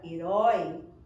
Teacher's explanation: Na palavra herói, eu percebo que a última sílaba também é a mais forte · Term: oxítona